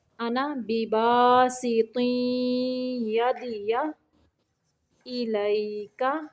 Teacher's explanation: ما انا کا الف نہیں پڑھنا